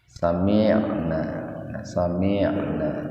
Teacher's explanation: perpaduan antara bunyi i dengan ain, antara kasroh dengan ain